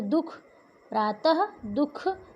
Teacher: विसर्ग, ऐसे वर्ण जिनका उच्चारण आधे ह के समान होता है।